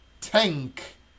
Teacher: You're really hiding that noon that's supposed to come from the front of your tongue, and then you're bringing that k from the back.